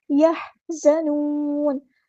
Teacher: ادا کرنا ہے، زا کو سختی سے ادا کرنا ہے، یحزنون، زا میں سیٹی بھی نہیں چاہیے، زا باریک لائٹ لیٹر ہے ، یحزنون، نون کو ہم ساکن کر دیں گے وقف کرتے